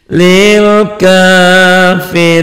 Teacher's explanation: Panjang ya mad arid disukun.